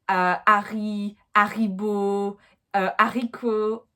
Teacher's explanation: So even names like Harry, Haribo, haricot, the H will be completely ignored.